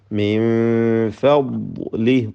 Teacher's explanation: ഫ എന്ന ഇസ്തിഫാലിൻ്റെ തർക്കീഖ് ചെയ്ത് ഉച്ചരിക്കേണ്ട അക്ഷരമാണ് നേർപ്പിച്ച്